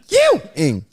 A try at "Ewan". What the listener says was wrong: That's not ing. If it's just an N, there's no I.